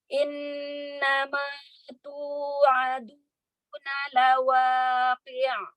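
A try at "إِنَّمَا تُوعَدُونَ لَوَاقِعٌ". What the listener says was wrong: Ya, hati-hati jangan memanjakan harokat ya. Ya, hati-hati nun tasydid, tingkatan guna akmal, sempurnakan gunahnya, jangan terburu-buru ya. Ya, gunah jangan ditekan, biar huruf makhraj harokat huruf setelah gunah itu jelas keluarnya ya.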